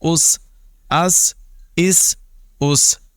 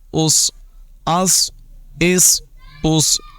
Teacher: سیٹی کی آواز سین میں نمایاں کریں گے، آواز باریک ہوگی، اور صاد میں بھی سیٹی کی آواز ہوگی لیکن آواز پر ہوگی